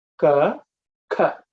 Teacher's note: When you say ka, the second one, there should be a puff of air hitting your palm.